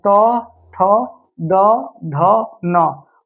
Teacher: और त वर्ग का उच्चारण स्थान जो है वो दंत होता है